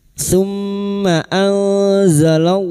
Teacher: mim yang bertasdid guna musyaddadah kita dengungkan selama 3 harokat